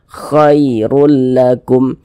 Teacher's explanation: Jangan sampai condong ke huruf e. Jangan dibaca khai. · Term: huruf lin